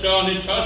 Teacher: જીભનો મધ્યભાગ તાળવા પાસે જઈને હવાને રોકે સમજો જીભનો મધ્યનો ભાગ તાળવા પાસે જઈ અને હવાને રોકે છે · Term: તાલવ્ય